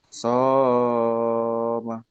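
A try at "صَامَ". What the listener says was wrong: Kepanjangan. Satu alif. Dua ketukan. Ulang.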